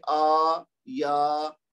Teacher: हमजा के ऊपर खड़ा ज़बर है जो कि अलिफ मद का मुतबादिल है, फिर या के बाद अलिफ है तो ये या मद हो गया, दोनों को दो दो हरकत देंगे